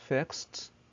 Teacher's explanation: So this is actually all about the verb endings, after which we pronounce the ed as ت.